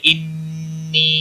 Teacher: نون مشدد پر بھی غنہ ہوگا، میم مشدد اور نون مشدد جہاں پر بھی آئیں گے غنہ کے ساتھ پڑھیں گے۔